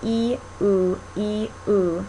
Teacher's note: feel how your tongue is moving from front to back